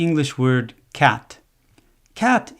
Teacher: cat is one syllable One Beat c v c and this type of syllable doesn't exist in Japanese it is a closed syllable CVC ending with a t sound